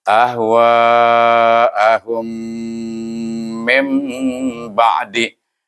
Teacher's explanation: kena baca dengan panjang lebih daripada 2 harakah, itu 4 atau 5 harakah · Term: mad wajib muttasil